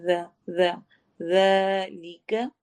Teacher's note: ज़ाल को नरमी के साथ पढ़ना है, ज़ की साउंड नहीं आएगी